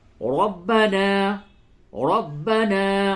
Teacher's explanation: را کو پر کیجئے اور نون الف زبر نا تھوڑا کھینچ کے پڑھیے